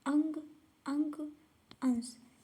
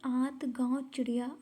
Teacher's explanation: अनुस्वार में नाक से सांस अधिक निकलती है और अनुनासिक में नाक से सांस कम निकलती है, मुख से अधिक